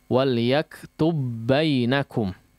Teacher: langsung di idghamkan kepada huruf berikutnya yaitu huruf yang sama seolah dia bertasydid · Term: idgham mislain